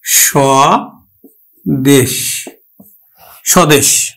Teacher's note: শব্দের বা পদের আদিতে যদি ব ফলা থাকে তাহলে ব ফলার উচ্চারণ হয় না